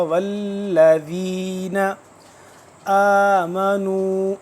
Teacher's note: ایک الف کے برابر لمبا ہو رہا ہے کیونکہ کھڑا زبر ہے